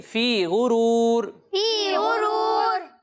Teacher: فی غرور اتنا زیادہ بھی نہیں کھینچنا ٹھیک ہے, ایک الف کی مقدار تک کھینچنا ہے